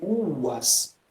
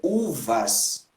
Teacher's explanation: Porque na pronúncia restaurada, nunca se pronuncia V. É sempre U.